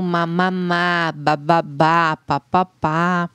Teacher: as mais comuns as bilabiais, que a gente fala que tem encontro dos lábios na hora de produzir